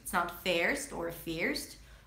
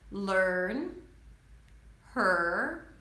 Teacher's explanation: the R eats up the vowel before, as in first, right? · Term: the r as in stir